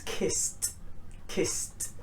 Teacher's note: Next one is an s ending, because s is very hissing, so kiss. If we add an ed, it becomes kissed, kissed.